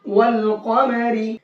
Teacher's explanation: یہاں پر ہم نے صرف لام کو پڑھا ہے واو کے ساتھ میں ملا کر کے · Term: حروف قمری